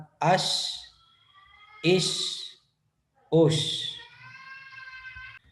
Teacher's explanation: شین کی آواز منہ میں پھیل جاتی ہے